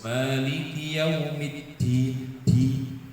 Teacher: Nah, huruf dal biar tidak ngobos, karena makhrajnya dal itu ujung lidah bertemu dengan pangkal 2 gigi seri yang atas, oe, tempatnya tumbuh gigi seri yang atas.